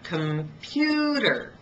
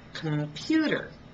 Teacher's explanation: on the first and third syllables I reduce them and I reduce them so much that I lost the vowel